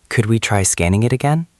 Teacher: Your voice went up at the end. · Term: intonation